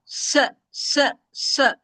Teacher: सीन पतला हरफ है। सीन में हवा चलती महसूस होती है। सीन की आवाज चलती है। और सीन में सीटी की आवाज आती है।